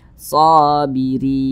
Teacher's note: panjangnya dua harakat atau kira-kira dua ketukan waabasyiris shobirin nah kemudian huruf ro dibaca tipis lagi dibaca tarkik karena dia berharakat kasrah lagi maka dibaca tipis